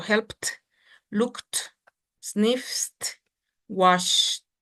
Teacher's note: Dice que la ed la tenemos que pronunciar como si fuera una ligera T. Entonces sería helped, así como hay que exagerar un poquito.